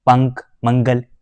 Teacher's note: जब हम उच्चारण करेंगे इन शब्दों का, तो हमारी जो सांस है सिर्फ सांस जो है केवल नाक से निकलती है